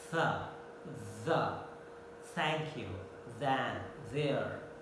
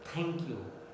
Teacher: But in RP English, actually it is not plosive, they are fricative. The passage is left and air comes continuously.